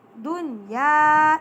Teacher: اس میں ہم دنیا کے نون ساکن میں غنہ نہیں کریں گے، ٹھیک ہے۔ دیکھیے یا آ گئی ہے یرملون کی، لیکن ہم نے یہاں پھر بھی غنہ نہیں کرنا۔